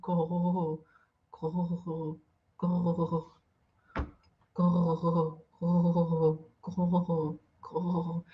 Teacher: E vai fazer o gu, só que puxando bem o som lá do fundo.